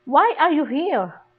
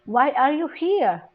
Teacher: The stress ay makikita doon sa here. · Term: strongest stress